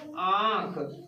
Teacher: अनुनासिक की बात करते हैं तो इसमें चांद बिंदु आता है। तो चांद बिंदु का जब हम उच्चारण करते हैं तो इसके उच्चारण में हवा नाक और मुंह से निकलता है। मतलब नाक से भी हवा का उच्चारण थोड़ा सा होता है और मुंह से भी होता है।